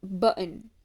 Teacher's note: the glottal stop uh used in some dialects such as in the middle of the word button